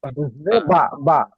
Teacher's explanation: দুই ঠোঁটের ভিজে অংশ থেকে বা